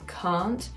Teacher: So here she says can't, the resonance is down, can't, instead of can't.